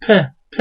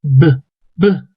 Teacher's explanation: zaman elinizi boğazınıza koyup o sesin böyle Voice Sound olduğunu anlayabiliyorsunuz çünkü Boğazınızda bir titreme oluyor pde olmuyor B'de oluyor